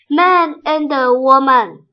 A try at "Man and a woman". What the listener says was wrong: 耶 ， 好 棒 哦 ， 完 全 正 确